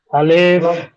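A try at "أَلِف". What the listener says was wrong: আলিফ টান হবে না আলিফ টান হবে আলিফ টান হবে না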